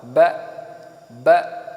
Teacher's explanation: Yang kalau hamzah ini dia punya sifat jahar. Jahar itu berarti nafasnya terhenti, dan kemudian dia juga syiddah, suara juga terhenti. Ketika saya sukunkan hamzah ba, maka dia terhenti baik secara nafas ataupun secara suara.